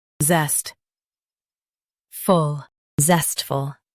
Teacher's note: Stress zest and keep full clear.